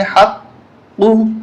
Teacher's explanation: لام پیش ہل، انہل، ہا قاف زبر حق، قاف پیش قو، قاف کو موٹا کریں گے، ہا کو حلق سے نکالیں گے